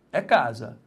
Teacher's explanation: Então a sílaba tônica é a penúltima. Repare, se é a penúltima, nós temos uma aqui, paroxítona.